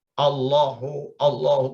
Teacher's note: Jadi hilang menjadi Allahu. Allahu, lam dengan lam ditebalkan, ditasdid, digabung, diidgham.